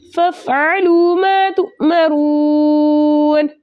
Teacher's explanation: واو ساکنوں سے پہلے کسی بھی حرف کے اوپر پیش ہو ایسا واو مدہ کہلاتا ہے، واو مدہ کو 2 حرکت کی مقدار کھینچ کر پڑھتے، لیکن آگے نون کا سکون عارضی وقف کی صورت میں آ رہا ہے، اس لیے یہاں پر مد بنے گی مد عارض وقفی، جس کی مقدار 2 4 6 حرکت ہے، لیکن 6 حرکت کی مقدار کھینچ کر پڑھنا زیادہ بہتر ہے. · را کے اوپر پیش ہونے کی وجہ سے ہم اس را کو موٹا پڑھیں گے